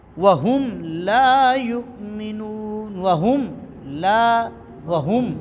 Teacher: میم کو اپنے مخرج سے ظاہر کر کے پڑھیں گے، میم کو اپنے مخرج سے، مثلا وَهُمْ لَا يُؤْمِنُونَ، وَهُمْ لا، وَهُمْ، اس میں کوئی اور حرف داخل تو نہیں ہوا، کوئی ناک میں آواز تو نہیں گئی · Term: اظہار شفوی